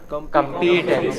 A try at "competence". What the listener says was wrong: No. The first part is stressed.